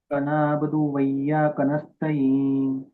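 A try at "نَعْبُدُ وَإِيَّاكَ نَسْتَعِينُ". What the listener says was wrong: మాషాల్లా.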